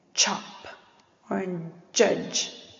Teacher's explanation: a combination of a stop followed by a fricative